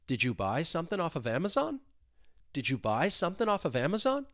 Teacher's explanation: And then off of Amazon, I can link that phrase together. This is a yes-no question, so you're going to have a rising intonation at the end.